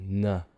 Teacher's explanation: In other words, it's coming out your nose. So air is released through your nose instead of through your mouth for N. So we call it a nasal sound. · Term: alveolar nasal